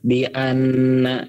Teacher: Nun tasydidnya ditahan ya.